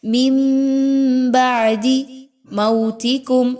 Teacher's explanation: میم واو زبر مو، یہاں پر واولین ہے، 1 سے 2 الف کے برابر اس کو پڑھیے